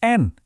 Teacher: Jadi kalau nun mati atau tanwin ketemu sama huruf-huruf tertentu, kamu tinggal bunyikan aja suara N-nya dengan tegas. Jelas banget. Enggak pakai dengung, enggak disembunyiin. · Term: izhar